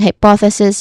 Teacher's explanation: hypothesis with a hissing sound at the end and a short e vowel sound before that